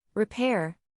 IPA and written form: rɪˈper (Repair)